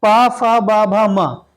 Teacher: इसका उच्चारण स्थान ओट होता है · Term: प वर्ग